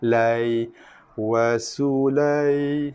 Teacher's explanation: Ya mati sebelumnya ada baris atas, maka ya tu wajib dibaca dengan sifat lin. Ya lin ya lunak.